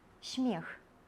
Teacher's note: «смех» – «се» абавязкова мяккая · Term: асімілятыўная мяккасць